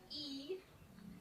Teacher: So E, you have your mouth really closed, your tongue is up real high.